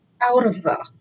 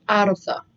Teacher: when you say that, it's 3 words, but when you pronounce it, it actually sounds like 1 word